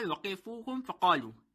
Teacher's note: Fe will be pronounced from the 2nd of articulation of our lips, which is lower teeth touches the inner wet part of lips.